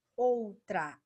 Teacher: o som do O é mais forte, então ele é vogal. E o som do U é mais fraco, então ele é uma semivogal